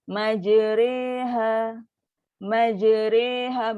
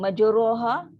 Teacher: Bunyi di antara baris atas dan baris bawah pada sebutan huruf ra.